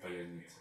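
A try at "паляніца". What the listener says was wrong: Просто в основном в белорусском языке тоже Ц. Не Т, а Ц. Как в русском Т, так в белорусском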